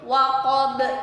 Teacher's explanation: Idza dua harokat dinamakan mad tabi'i atau mad asli. Waqab ujungnya mantul dinamakan qalqalah kubra